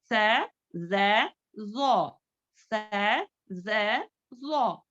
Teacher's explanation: Soft letters हैं ये, soft ही। देखो दोनों दांतों के दरमियान थोड़ी जुबान हमारी बाहर आनी है, तब जाकर इसका मखरज अदा होता है।